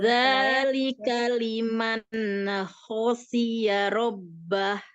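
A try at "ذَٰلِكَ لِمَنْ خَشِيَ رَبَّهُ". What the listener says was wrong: Jadi kalau misalnya agak itu malah jadi kol-kola ya, ne-nya. Zalika liman agak ditekan ujung lidahnya itu pas ngucapin nunnya itu kan nunnya kan sampai sempurna bener ya. Itu lidahnya itu sampai nempel dulu gitu. Jadi jangan dilepas itu sebelum ngucapin bunyi kho gitu.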